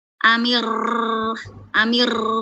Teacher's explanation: bibirnya nggak mundur nggak maju tapi getarannya kebanyakan